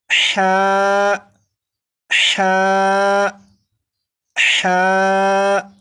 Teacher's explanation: ہا کو 1 الف کے برابر کھینچ کر پڑھیں گے، جیسے ہا ہا ہا، 4 مرتبہ پڑھے گا۔